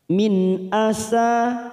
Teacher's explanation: nun sukun bertemu Hamzah Idhar halq kita baca jelas tanpa mendengung